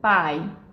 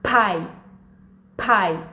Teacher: Em inglês, esse som é o que a gente chama de aspirado. Então, ele tem que ter ar saindo.